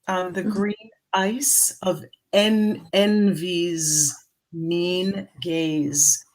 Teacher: So the green ice, I would give a little glottal right at the beginning of that.